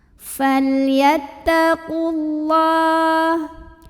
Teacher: Maka karena ada pertemuan 2 huruf sukun, salah satunya dilepaskan, yaitu huruf sukun yang pertama yang waw. Jadi jika wasal, qaf nggak punya waw, pendek bacanya.